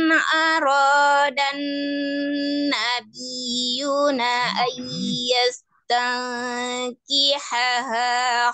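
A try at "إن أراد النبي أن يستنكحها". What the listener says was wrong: Arodan niyu, nggak ada nanya di sini, niyuna tadi dibacanya niyuna an ayas di pertambahan ya tadi lin nabi in arodan nabiyu.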